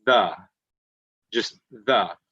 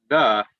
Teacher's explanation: when you say that the you can feel your throat vibrate a little bit you can feel it moving there though okay and that's what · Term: voiced